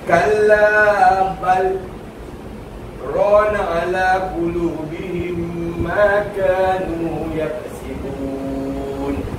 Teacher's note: Berhenti sejenak tanpa menukar nafas yang baru. Lepas tu sambung balik. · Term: sakta